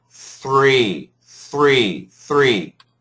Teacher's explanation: keep the TH long, and then the tongue goes down for the R.